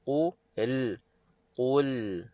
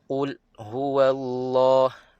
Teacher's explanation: dia mengalir sedikit dia tidak terputus dia tidak terputus terus